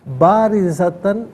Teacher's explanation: را کے نیچے زیر ہے، را کو باریک کر کے پڑھیں گے